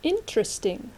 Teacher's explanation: Các bạn hãy chú ý là trọng âm là in, okay? Not interesting, không phải.